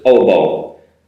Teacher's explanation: in japanese that has an eh sound at the end but in english you don't need it